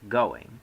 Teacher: The first vowel gets fully spoken before the second one is pronounced. In going, we have a 2-syllable word.